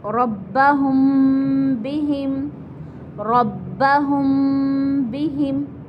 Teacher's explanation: اب اس کو کیسے پڑھتے ہیں، ہماری اس کی مثال لیجئے، ربہم بہم، ربہم بہم، ہم میم ساکن تھا اور اس کے بعد بہم با آ گیا تو یہ ہمارا اخفاء کیا جائے گا یہاں پر، یعنی غنہ ہوگا، ناک میں 1 الف کے برابر آواز لے کر جائیں گے · یعنی غنہ کریں گے اس کے اندر ہم اور ناک میں آواز لے کر جائیں گے